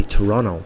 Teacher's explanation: they swallow the T, they don't bother saying it.